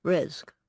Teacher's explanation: substitution of a G sound for the ka sound